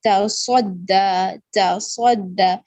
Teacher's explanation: تصدہ صاد موٹا اور سیٹی بھی ہوگی. دال کو باریک کر کے پڑھیں گے تصدہ، تصدہ، تا اور دال باریک، صاد موٹا.